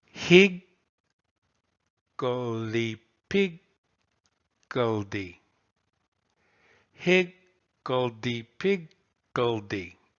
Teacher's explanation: So you have 2 little dactylic feet.